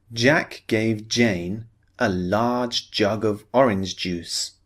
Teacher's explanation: we're focusing on the J sound, the voiced sound